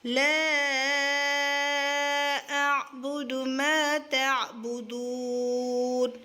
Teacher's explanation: ما کو کھڑا کریں گے الف کے مقدار پر